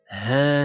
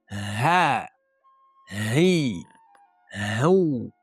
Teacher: Bu harfni chiqarish uchun eng oson usullardan bittasi, siz kimdir bilan gaplashganingizda uning gapini tasdiqlamoqchi bo'lib, ha deysiz-u, o'sha holatdagi ha holatingiz arab tilidagi halqumli tubidan chiqadigan haga eng yaqin holat hisoblanadi. Ya'ni kimdir bizni chaqirgan holatda yoki degan tirnagan holatda hosil qilmaymiz.